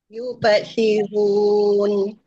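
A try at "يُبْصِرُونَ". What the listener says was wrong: Yub. Jangan tarik you tu.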